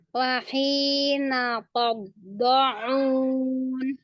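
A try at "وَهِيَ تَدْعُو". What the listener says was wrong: nggak ada tasdidnya. Makanya kenapa ditasdid? Nggak ada. Kenapa dibaca wahina qobo?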